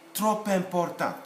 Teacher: We would say trop important. Trop alone, trop in isolation is silent, but because of this vowel following it face to face, then they become one sound, junction, sound liaison.